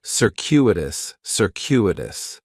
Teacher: The stress is going to be on that second syllable, and that CU is kind of like you're saying the letter Q, circuitous, circuitous.